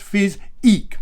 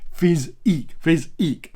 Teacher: Make sure you put the emphasis on that second syllable